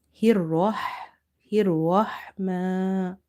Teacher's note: Now, here ra is heavy because of having fatha on the top. Ha is from the middle of the throat. · The sound of mim is stretched because of having vertical fatha on the top.